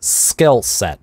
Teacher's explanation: английские /sp/ /st/ /sk/, которые не придыхаются, они очень часто звучат с таким интенсивным, напряженным /s/